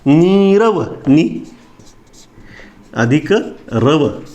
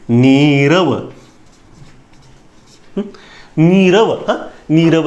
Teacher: नीरव, नी अधिक रव, या विसर्गाचा लोप आणि नी दीर्घ झाला.